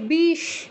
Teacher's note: তিনটে স আমরা বাংলায় একই রকম উচ্চারণ করি